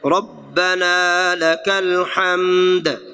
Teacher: دال مقلقل ہو جائے گا، ہلا دیا جائے گا